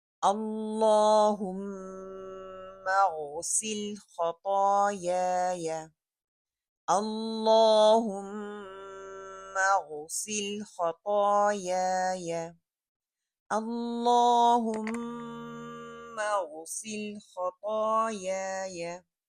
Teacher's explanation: Again اللہم، اللہ موٹا پڑا جائے گا، میم کا غنہ کریں گے، غین ہیوی ہے، اور میرے گلے کا جو اوپر والا حصہ ہے، ٹاپ پارٹ ہے، وہاں سے ادا ہوگا۔ خائن تا جو آپ کو پتہ ہے کہ موٹا پڑھنا ہے، اور یا کی زبر کو نہ تو مجھول کرنا ہے نہ ہی لمبا کرنا ہے۔